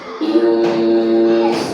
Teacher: Maka suara nun sukun tersebut itu harus disamarkan disertai dengan nunnya. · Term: ikhfa